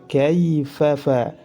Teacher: Kaifa huruf lin dan memiliki sifat lin, akan tetapi tidak dibaca mad menurut riwayat Hafs an Asim min Tariq Asy-Syatibiyah.